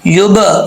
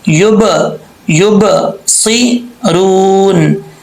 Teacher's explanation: کوئی بھی حرف ساکن ہو اس میں قلقلہ کیا جائے گا، تو یہ با حروف قلقلہ میں سے ہے، یہاں قلقلہ کریں گے